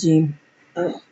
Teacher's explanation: जबान के दरमियान और तालू के दरमियान से अदा होता है और इसकी आवाज मुंह में फैलती है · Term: हरूफ शजरियन